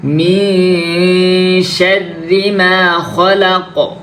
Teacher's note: তারপর মি গুন্না, নুন সাকিনের পরে শিন আসছে, শিন হইছে ইকফায়ে হাকিকির হরফ, তাহলে আমাদের এখানে গুন্না করতে হবে। মি শাররি মা খলাক, শাররি অনেকে কি করে শাররি রটাকে মোটা করে ফেলে।